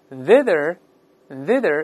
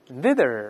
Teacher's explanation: 舌尖都吐出来一点，然后声带震动发▁th